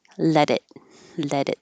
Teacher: Let it. That T changes to a D.